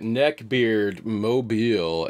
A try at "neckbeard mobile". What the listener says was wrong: Why'd you say it like that? Why'd you say it like that? You made it sound like netgear.